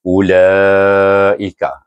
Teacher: kita baca Hamzah itu baris depan dengan satu harakat saja